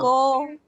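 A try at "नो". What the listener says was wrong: no not go no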